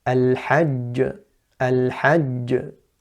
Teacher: The qalqala on the jim there is clear, it's loud